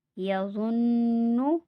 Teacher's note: نون مشدد پہ غنہ ہوگا